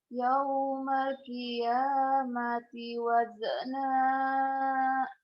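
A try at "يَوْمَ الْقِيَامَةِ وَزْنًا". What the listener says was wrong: Ini bukan qolqolah waznya terus yaumalnya kamu tadi kurang kurang menikmati yaumal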